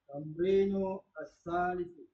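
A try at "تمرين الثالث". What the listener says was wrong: Jangan dipisah, langsung lanjut. Tamrinus salis.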